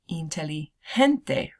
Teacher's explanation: G and then the next letter is an E okay um that G sound is gonna make the sound an H sound plus a little phlegm